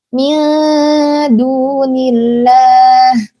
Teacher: lafzul jalalah dibaca tipis karena sebelumnya adalah huruf yang berharokat kasroh bukan fathah. Jadi otomatis lafzul jalalahnya ini dibaca tipis.